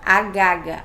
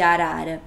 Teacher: ele trocava pelo G. Ele falava agaga ao invés de arara